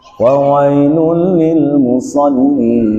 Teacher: Idgham bila gunnah, idgham tanpa didengungkan, tanpa dilama-lamain.